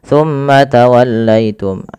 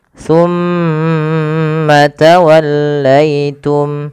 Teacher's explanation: Pada lafal summa ditahan dulu. Lafal mimnya ditahan. Jangan langsung dilepaskan.